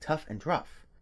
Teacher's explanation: /x/ also merges with /f/ in some dialects, giving rise to forms like tough and rough